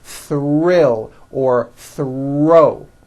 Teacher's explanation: the R is the strongest sound of the blend and is louder than the TH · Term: THR blends